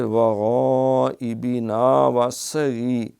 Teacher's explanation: سین نہ بن جائے سیٹی والی، صاد رہے